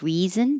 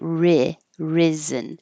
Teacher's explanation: The vowel is I as in hit. So keep your tongue a little lower, not E like reason, but ri, risen.